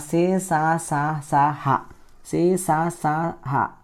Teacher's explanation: సే స హ పలికేటప్పుడు కొంచెం గాలిని బయటకు వదులుతూ చెప్పడం జరుగుతుంది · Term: ఊష్మాలు